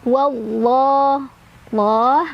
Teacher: Allah mad tabi'i karena ada fathah berdiri di atas huruf lam jalalah dibaca panjang 2 harokat.